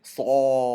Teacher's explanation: Notice this صاد فتحة ألف مد. I'm holding it for 6 counts, but I'm also making it heavy. I'm saying صاف.